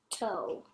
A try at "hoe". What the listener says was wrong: Yes, except the first sound is not a T. It is a K. Hoe. Hoe.